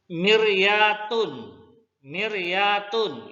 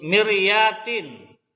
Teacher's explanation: Jadi miryatin tipis saja.